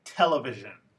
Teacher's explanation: the word television has word stress on the first syllable not the third one